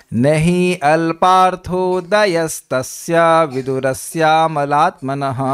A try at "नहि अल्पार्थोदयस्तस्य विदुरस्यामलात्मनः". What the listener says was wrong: देखिए, वो द पे आपको थोड़ा पॉज करना पड़ेगा, जल्दी नहीं जाना होगा।